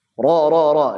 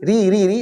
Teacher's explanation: ro ro ro dia lebih kerasa itu masuknya tapi kalau tipis Ri Ri Ri dia dia nyimpang ke depan dikit